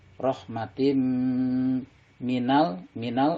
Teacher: Rahmatim ini idgham bigunah karena ada tanwin bertemu dengan huruf mim. Dibacanya, dimasukkan tanwinnya kepada huruf mim dan ditahan 2 harokat atau didengungkan.